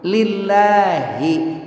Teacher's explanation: Lillahi, hi-nya bergetar dada.